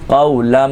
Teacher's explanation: لن کی جگہ لم کی آواز نکلے گی تنوین کی جگہ میم کی آواز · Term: اقلاب